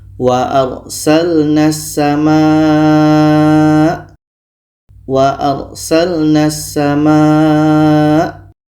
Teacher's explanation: Maka bunyi lam ini kita tidak baca, karena ada huruf na terus masuk ke sin. Okey, huruf na terus masuk ke sin.